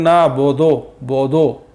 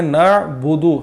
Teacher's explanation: हमने इसमें पढ़ा है बा पेश बू दाल पेश दू, दोनों की आवाज़ है बू और दू, बो और दो नहीं है